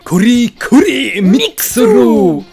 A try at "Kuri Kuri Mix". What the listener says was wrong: Mix. A nie ma L ani R.